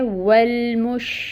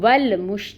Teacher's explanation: واو کے ساتھ لام کو ملائیں، لام کو ہلانا نہیں ہے، لام ساکن ہے، والمش، آپ نے اس کو ول مش نہیں کرنا، ٹھیک ہے؟